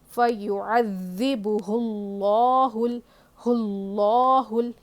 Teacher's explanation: لفظ اللہ سے پہلے پیش ہو تو لفظ اللہ کے لام کو ہیوی پڑھیں گے, موٹا پڑھیں گے. فیعذبہ اللہ اللہ یہ بھی لام کو سختی سے پڑھنا ہے. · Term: لفظ اللہ کا قاعدہ